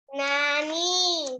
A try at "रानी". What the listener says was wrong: नहीं, नानी नहीं, रानी।